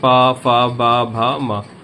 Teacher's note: जब भी आप इसका इस वर्ण के इस वर्ग के प वर्ग के वर्णों का उच्चारण करेंगे तो आपके दोनों होठ आपस में एक दूसरे को स्पर्श करेंगे। तभी इसका उच्चारण निकलेगा। अगर आप इसका उच्चारण सही से करना चाहते हैं तो होठों को आपस में स्पर्श कराना पड़ेगा।